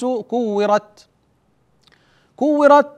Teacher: انحبس صوت التاء اقول كورت ثم بعد هذا الانحباس يجري النفس فاقول كورت خرج النفس بعد الانحباس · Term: الشده